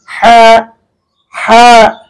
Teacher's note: এটা হচ্ছে কণ্ঠনালীর মধ্যখান হইতে উচ্চারণ করতে হবে, একেবারে ভিতর থেকে, একেবারে মধ্যখান হইতে হা হা, এভাবে কিন্তু আপনি উচ্চারণ করবেন।